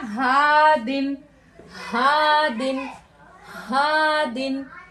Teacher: और ये जो हा हमारा कहां से निकल रहा है? अक्सा हलक से निकल रहा है।